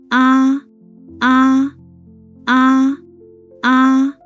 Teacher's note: mouth opens wide and your tongue drops down.